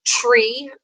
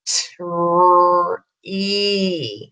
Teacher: when they say it quickly like tree, they hear a ch typically. So you want them to slow down, saying those sounds nice and slow.